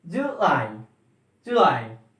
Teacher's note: the transcription is July and stress on lie.